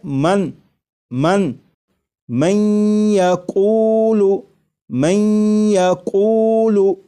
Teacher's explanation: یہاں پر دیکھیے گا یہ نون ساکن ہے، نون ساکن کے بعد جب یا آ جائے تو نون ساکن کو یا میں ادغام کر کے پڑھیں گے، ملا کر پڑھیں گے، اور نون ساکن کو یا میں ادغام اس طرح کریں گے کہ غنہ بھی ہو، جیسے لکھا ہوا ہے من من من یقول من یقول، تو میم کے بعد آپ کو یہ جو آواز آ رہی ہے میں این این، یہ نون ساکن کا یا میں ادغام بھی ہو رہا ہے، اور ادغام اس طرح ہو رہا ہے کہ غنہ کے ساتھ۔